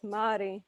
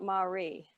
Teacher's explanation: The R's in Māori should be rolled.